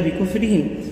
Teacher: بکفرہم کی را کو باریک پڑھا ہے